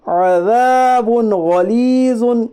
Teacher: دو پیش کی تنوین کو ظاہر کر کے بلا گنا کے جلد پڑھیے، اسے اظہار کہتے ہیں۔ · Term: اظہار حلقی